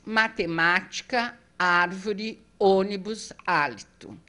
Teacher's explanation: a proparoxítona anti penúltima é a mais forte